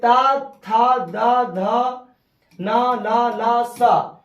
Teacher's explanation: ये दंत से बोले जाते हैं